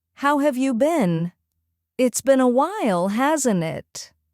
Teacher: Make your voice rise slightly at the end